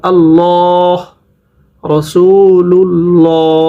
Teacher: যখন আল্লাহ শব্দের পূর্বে জবর বা পেশ থাকবে তখন আল্লাহ শব্দের উচ্চারণ মোটা করে পড়তে হবে